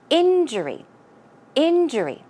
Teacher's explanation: let's check out where the stress goes it goes on the first syllable